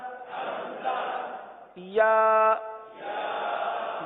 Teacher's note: زبان کا درمیان اور تالو کا درمیان